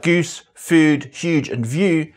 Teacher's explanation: It also exhibits quite extreme goose fronting, whereby the U vowel in words like goose, food, huge and view is pronounced quite far forward in the mouth.